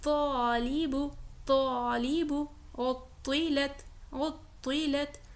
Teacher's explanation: زبان کی نوک کا اوپر والا حصہ جب اوپر کے دانتوں کے اندرونی حصے کی روٹس یعنی جڑ سے لگتا ہے تو تا ادا ہوگا